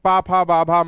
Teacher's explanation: पा वर्ग यानी पा फ बा भा मा का उच्चारण स्थान क्या हो जाएगा ओस्ट होगा